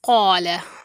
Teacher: ये जो क़ौफ़ है इसको हम मोटा पढ़ते हैं, तो उसके साथ अलिफ आ जाए तो अलिफ भी मोटा पढ़ा जाता है। अगर बारीक पढ़े जाने वाले हर्फ के साथ अगर अलिफ आ जाए तो फिर वो बारीक पढ़ा जाता है।